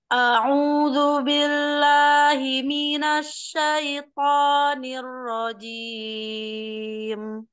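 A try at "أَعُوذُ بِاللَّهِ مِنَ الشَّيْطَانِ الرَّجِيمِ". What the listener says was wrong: Cuman shinnya aja deh, ini tafasinya kurang. Coba sekali lagi.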